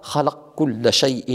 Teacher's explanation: يدغم الكاف في القاف، وتدغم أيضا القاف في الكاف باعتبارهما حرفان متقاربان